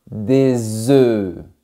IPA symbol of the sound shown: ø